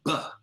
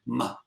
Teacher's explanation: WHEN WE MAY MM MM, WE'RE REALLY DOING THE BUH SOUND, MUH, BUT WE'RE OPENING UP A TRAP DOOR IN OUR NOSE SO IT SOFTENS THE BUH INTO A MUH